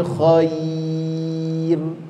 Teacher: kalau ya mati sebelumnya baris atas, maka bunyikan dia ke huruf i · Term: mad lin